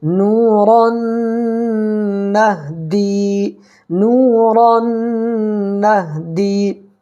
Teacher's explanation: یا ساکن سے پہلے دال کے نیچے زیر ہے تو یا مدہ ہوگا، اس کو 1 الف برابر کھینچ کر کے پڑھیں گے۔